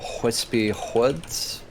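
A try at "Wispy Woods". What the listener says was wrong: There's no H on that second word. Can you say that again?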